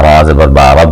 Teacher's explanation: آپ نے یہاں پہ دیکھا وا را آیا، را کے اوپر زبر آئی تو میں نے را کو پر کر کے پڑھا